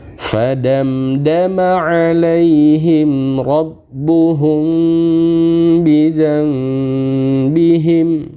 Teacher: apabila mim sukun bertemu dengan huruf ba dibaca samar dan berdengung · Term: Ikhfa Syafawi